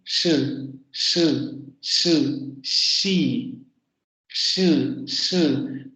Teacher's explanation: Tengo que dejar que salga de manera ininterrumpida, aunque debo generar cierta fricción en el aire. Y luego además sé que no tengo que hacer vibrar las cuerdas vocales. · tengo que colocar la lengua en la parte de los postalveolos